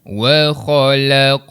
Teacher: Yang perlu kita lantunkan bacaan huruf Qaf tadi tu. Huruf Qaf sukun, lantunkan bacaan huruf Qaf. Wa khalaqnakum, lantunan pada huruf Qaf. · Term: qalqalah